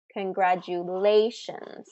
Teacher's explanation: So that's fourth syllable stress in congratulations.